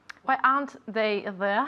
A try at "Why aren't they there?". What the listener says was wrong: Very good. Very good pronunciation.